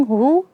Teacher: kita bertemu dengan ha yang dhammah sehingga kedua bibir kita monyong